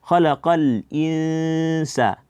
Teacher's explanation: Dibaca yaitu lidah tidak dinaikkan ke langit-langit. Yaitu dia ada gunnah yang sempurna yang keluar dari hidung, dan juga ada namanya suwaitun atau suara kecil yang keluar dari mulut. Ya, bukan sautun, suara besar, tapi suwait namanya yang keluar dari mulut, dibarengi dengan gunnah yang sempurna yang keluar dari hidung, kemudian dengan bersiap-siap pada huruf selanjutnya. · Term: ikhfa